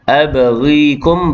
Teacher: ba yang sukun qalqalah sughra berdetak kecil.